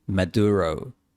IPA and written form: mə'dʊ.ɹoʊ (Maduro)